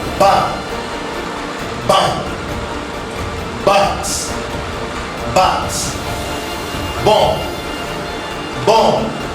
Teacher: the vocal cords vibrate during the production of ba sound, while they do not vibrate when you are pronouncing the pa sound. · The lips are brought together to obstruct the air, which is released with an explosive sound.